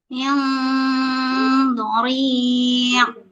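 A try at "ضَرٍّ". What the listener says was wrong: Masih hidung Bun, hidung banget itu. Boknya jadi ke hidung juga ya Bun ya. Bori. Boknya juga masuk hidung Bu. Berarti nanti latihannya begini. Bun, latihannya nanti dipencet hidungnya ya Bun. Dipencet hidungnya. Pertama dipencet hidungnya dengan kuat dulu ya. Nanti kita keluarkan a ya. Nah, terus kita pencet hidungnya pelan-pelan. Pelan-pelan ya Bun. Pelan-pelan dipencetnya jangan terlalu kencang. Terus kita buat a.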